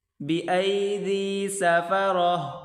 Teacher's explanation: وقف کی حالت میں اس تا کو ہا پڑھا جائے گا